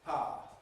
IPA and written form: paə (power)